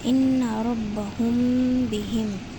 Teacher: مثال کے طور پر ان ربہم بہم، جیسے میم ساکن کے بعد با آ رہا ہے تو ہم نے یہاں پر غنّہ کرتے ہوئے میم کو جیسے ہی ختم کیا ویسے ہی ہم نے با کو اسٹارٹ کر لیا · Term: اخفاء شفوی